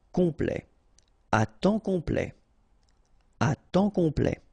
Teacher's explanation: Temps, and then complet, okay, here a T at the end will open it, the sound of the E, so E, okay, ple, complet, complet, and then OM is nasal here, just because you get your P after that, so it's on, complet, à temps complet, à temps complet.